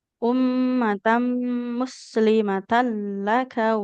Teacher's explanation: Ummatam, mimnya bertasydid harus jalan dulu.